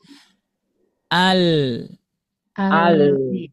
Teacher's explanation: Dari sisi lidah bagian kanan. melingkar ke sisi lidah bagian kiri itu ya. Dari sisi lidah bagian kanan melingkar ke ee apa? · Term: huruf lam